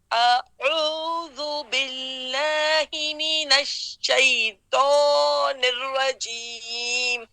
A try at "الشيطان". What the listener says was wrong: احسنتی اب دیکھیے شیطو آپ نے زبان کی نوک بنا دی ہے حرف الطا میں نوک نہیں بنانا شیطا تا دیکھیے تا احسنتی احسنتی اللہ مبارک دیکھیے ماشاءاللہ بالکل ابھی صحیح پڑھا ہے میں ابھی پڑھتی ہوں جیسے آپ نے پڑھا آپ نے کیسے پڑھا شیطانی الرجیم اب میں پڑھتی ہوں کیسے ہم پڑھیں گے شیطان الرجیم فرق محسوس ہوا ہے آپ کو